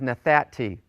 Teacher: Nathanti becomes nathati. The noon of the verbal root has assimilated into the tau of the perfect sufformative. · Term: noon assimilating